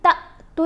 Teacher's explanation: تا کو یہاں پر لمبا نہیں ہم نے پڑھا، ہم نے اس کو جھٹکا دے کر پڑھنا ہے کیونکہ یہ جو الف ہے الف نہیں ہے، یہ اب حمزہ ہے.